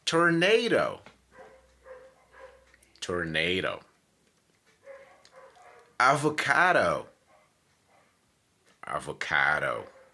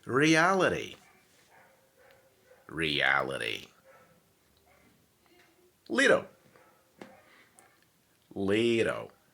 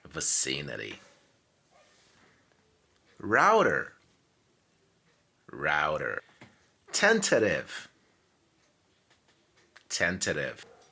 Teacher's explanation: American people tend to pronounce letter D and letter T into an R sound